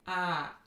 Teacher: when you say ah, your tongue is low and the tip of your tongue is stretched toward the front of your mouth